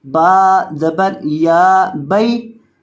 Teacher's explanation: یہ جو با ہے اس کو لمبا نہیں کرنا کیونکہ اس کے بعد یہ جو یا آ رہا ہے یہ یا حروف مدہ والا نہیں بلکہ یہ یا حروف لین والا ہے، تو اس وجہ سے با کو لمبا نہیں کریں گے کیونکہ یہ یا لین کا ہے مدہ کا نہیں ہے.